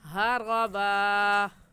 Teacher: रा के ऊपर ज़बर है, पुर करके पढ़ेंगे और ज़बर की तनवीन में एक ज़बर पढ़ा जाता है, इस वजह से एक ज़बर को पढ़ेंगे और ऐसे कहेंगे हरबा।